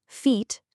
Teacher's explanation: For tense or long vowels, like the e in feet, your mouth muscles are well more tense and you hold the sound just a little bit longer.